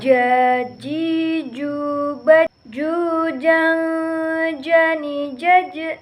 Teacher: Selanjutnya yaitu huruf ja. Dilafalkan dengan menyentuhkan tengah lidah ke daerah-daerah langit.